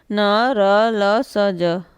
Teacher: वर्ष ध्वनियाँ तालु और दांत के बीच का उभरा हुआ हिस्सा